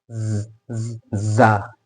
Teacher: दांतों को बंद करके, दांत हमारे दांत बंद हो गए और जबान जो है नीचे के दांत की जड़ों को टच करे